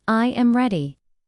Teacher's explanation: The voice falls naturally at the end. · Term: intonation